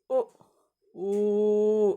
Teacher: ತುಟಿಗಳು ಉ ಅಂದಾಗ ನಮ್ಮ ತುಟಿಗಳು ಓ ಆಕಾರದಲ್ಲಿ ಬರುತ್ತೆ. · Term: ಓಷ್ಠಿಯ